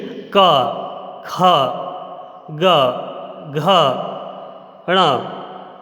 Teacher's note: जैसे कि पहला है का वर्ग। का वर्ग का उच्चारण कंठ के माध्यम से होता है। इसमें वायु का प्रभाव कंठ पर रहता है।